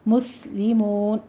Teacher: سین پہ سیٹی کی آواز کے ساتھ حمز پیدا کریں گے، اور مون میں واو مدہ کے بعد ہم وقف کر رہے ہیں تو مدارس وقفی پیدا ہوگی، 6 کاؤنٹ کرنا ہے۔